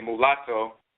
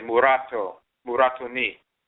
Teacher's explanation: they will automatically change the L into a rolling R, and they'll say murato